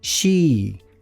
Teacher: I é um I mais forte, um I mais tensionado. A língua fica um pouco mais tensa e é um som mais longo que a gente tem no português